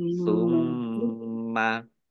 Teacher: mim tasdid, bacaan dibaca gunnah atau mendengung, ditahan 2 harokat